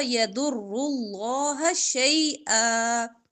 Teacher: ضاد را اور لام موٹا ہوگا